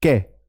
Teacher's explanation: हाथ पर जो हवा है वो कै बोलने में कम आई, कै। खे, खे जब बोलेंगे तो हवा हथेली पर ज्यादा लगेगी, खे। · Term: अल्प प्राण